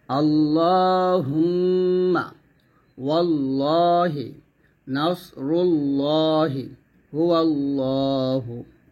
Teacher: এখানে বোঝানো হয়েছে যে এটা হচ্ছে আল্লাহু শব্দটা, এই যে আল্লাহু শব্দ লামটা, তো এই লামের ডাইনে যখন জবর অথবা পেশ থাকে তখন এই লামটাকে মোটা করতে হয়। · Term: পোর